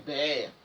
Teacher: on fait tomber la dernière syllabe et en tombant, ça a provoqué l'allongement compensatoire